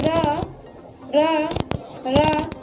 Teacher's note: आपने देखा होगा कि जो अपनी जिह्वा है वो नीचे कहाँ लग रही है? दांत की जड़ में जाके। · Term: दंतमूल